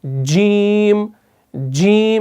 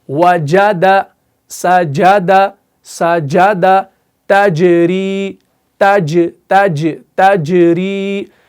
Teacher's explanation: जब एग्जैक्टली जुबान का ये बीच वाला हिस्सा उठकर ऊपर वाले सख्त तालु से लगेगा तो जीम अदा होगा